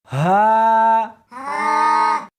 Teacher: اس حرف کو سینے کے اندر سے نکالنا ہے